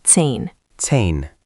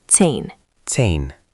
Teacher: Again, German z is ts, so it starts like zehn. Zehn. Add the ts at the start, zehn.